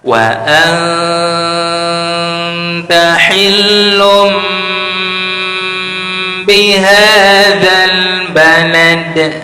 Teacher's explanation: Wa anta hillum di lam ada tasdid, maka nabarkan, tinggikan suaranya. Lum tanwin bertemu ba, bacaan iklam, dengungkan iklam, masukkan ke rongga hidung, tahan 3 harakat.